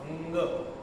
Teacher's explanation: यम हे कळतच नाही आपल्याला उच्चारण कारण की अर्धा नाकातून येतोय अर्धा उच्चार नाकातून येतोय अर्धा तोंडातून येतोय तर नाक आणि तोंडाचं उच्चारण मिक्स होऊन उंग य असा उच्चारण